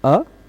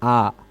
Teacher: अ बोलने में कम मुंह खुलता है, आ बोलने में थोड़ा सा ज्यादा खुल जाता है ना। यद्यपि इन दोनों का उच्चारण स्थान एक है, कंठ, कंठ से ही सीधे इसका भी उच्चारण होता आ।